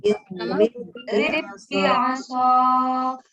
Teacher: Bah pertama nggak usah mantul.